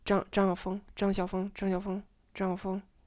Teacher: the 4 gets reduced to just a pitch of level 3